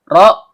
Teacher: ujung lidah bertemu dengan langit-langit bagian belakang. Karena ro-nya berharokat kasroh, maka hukum bacaannya tipis atau tarkik.